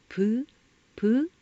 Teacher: 순경음 비읍을 발음하면 입술 가벼운 소리니까 아래 위 입술을 닿을 듯 말 듯하게 조금 열고 숨을 내뿜을 때 마찰되어 나는 소리인데요